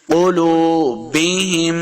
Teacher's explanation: میم مشدد ہے، ہاں کو میم کے ساتھ ملا کے پڑھنا ہے اور غنہ کریں گے.